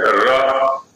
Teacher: माने जहां से ट का उच्चारण कर रहे हैं वहीं से र बोलेंगे, जीभ खड़ी हो जाएगी